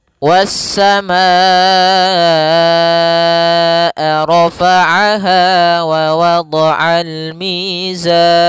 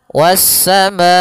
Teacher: Alif kemudian Hamzah tersebut pada satu kata sehingga dinamakan muttasil bersambung panjang untuk mad wajib muttasil yaitu empat harakat atau lima harakat dalam sebuah riwayat kedua-duanya kuat yang mana kita ambil yang kita